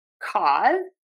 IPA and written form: kɔz (CAUSE)